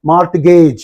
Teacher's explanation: According to the Indian pronunciation, it's a mortgage. You pronounce T